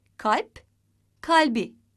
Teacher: kalp sözcüğü ünlüyle başlayan bir ek alınca ünsüz yumuşaması olmuştur